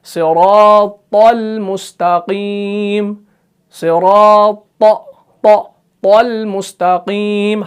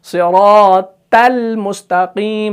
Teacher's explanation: تو تا اور طا میں کوئی فرق ہی نہیں بچا. اسی وجہ سے طا کو آپ نے موٹا پڑھنا ہے، تا کو آپ نے باریک پڑھنا ہے